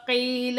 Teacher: یا ساکن سے پہلے زیر ہے، یا مدہ بن رہی ہے، ایک الف کی مقدار کھینچ کر پڑھا جائے گا